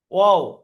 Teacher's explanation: দুই ঠোঁট না মিলিয়ে উচ্চারিত হবে